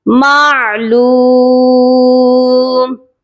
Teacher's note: عین کی آواز حلق سے آئے گی